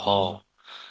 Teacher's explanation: আর হতে কিন্তু ঘষ লাগে, বাতাসও বেশি লাগে, হ, ঘষাও লাগে, বাতাসও বেশি লাগে, তাই হ হচ্ছে ঘোষ মহাপ্রাণ